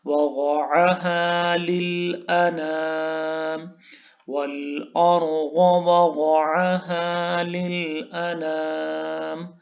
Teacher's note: में रॉ को और गौत को पुर पढ़ेंगे, मोटा पढ़ेंगे, और वग़अहा यहाँ पे भी गौद आ गया है, गौद को पुर पढ़ेंगे.